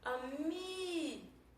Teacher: Vocês perceberam que eu passei mais tempo pronunciando o mi. Então o mi é a minha sílaba tônica.